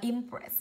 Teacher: hai phụ âm đứng cạnh nhau, trọng âm rơi âm tiết thứ hai